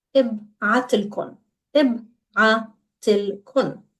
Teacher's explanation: راح ابعت, I will send, and then لكن, to you literally, and it's pronounced as one word.